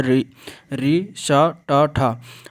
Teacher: इसमें मूर्धा स्थान उच्चारण स्थान है